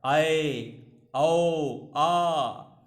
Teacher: विवृत्त में सबसे ज़्यादा मुंह खुलता है। आए, औ, आ, ये क्या हैं, इसमें सबसे ज़्यादा खुलता है, इसीलिए इसके अंतर्गत आ, आए, औ ये आ रहे हैं।